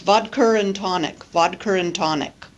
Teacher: the drink vodka and tonic in many dialects of English is pronounced vodar and tonic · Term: intrusive